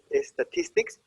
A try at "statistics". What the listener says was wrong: It's a little difficult because the mouth that's accustomed to speaking Spanish automatically puts the E there.